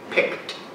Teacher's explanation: The P, the CK, and the D. Although the D really, honestly, is said more like a T.